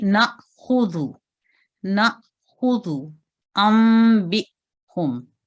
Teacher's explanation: ہلکا سا جھٹکا دینا ہے لیکن اتنا زیادہ نہ دیں کہ حمزہ یا الف کی آواز میں عین کی آواز شامل ہو جائے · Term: حمزہ ساکن